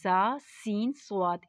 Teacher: जा सीन स्वात में सीटी निकलेगी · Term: सीटी वाला र्फ